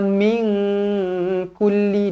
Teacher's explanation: Nun kosong bertemu dengan Kaf ikhfa Hakiki dengung dua harakat